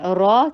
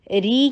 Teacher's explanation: بھی فتحہ ہو یا ضمہ ہو را ہمیشہ ہیوی ہوتا ہے، را کہنا ہیوی ہے، ری کہنا باریک ہے